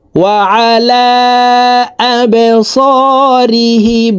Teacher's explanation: এই লামকে 3 আলিফ টেনে পড়তে হবে, কারণ মদের হারফের উপরে চিকন চিহ্ন বা মে হামজা, মধ্যে মুনফাসিল 3 আলিফ টানিয়া পড়িতে হয়।